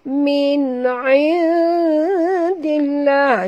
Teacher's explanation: Izhar halqi. Min bacaannya terang nyata tanpa dengung